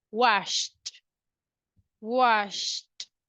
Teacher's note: so remember it no vibration voiceless let's pronounce it as a letter t